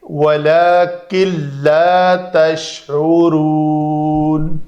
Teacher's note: میں سے لام ہے، تو اس نون کا ادغام کامل ہو جائے گا، ناقص نہیں رہے گا، تو اس نون کو پڑھنے میں زیرو کر دیں گے